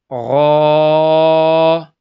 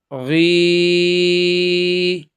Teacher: غین جو ہے وہ اس کا مخرج جو ہے حلق کے بالکل شروع والے حصے سے یعنی منہ کی طرف ادا سنیں، غا، یعنی یہ زبر کے ساتھ اور زیر کے ساتھ، غی، اور پیش کے ساتھ، غو۔